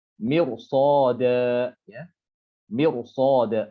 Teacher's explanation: Mirsada, dia ro-nya tebal nih.